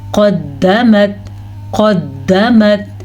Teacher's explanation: قاف کو موٹا بھی پڑھنا ہے اور دال کے اوپر چھوٹے سے جھٹکے کی گنجائش بھی بنتی ہے کیونکہ شد کے اندر ایک ساکن ہوتا ہے۔